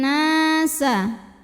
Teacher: harokat [Musik] Nun tasydid ini adalah ghunnah musyadadah karena nunnya bertasydid cara bacanya kita dengungkan bunyi n-nya tahan sampai ada getaran halus ke hidung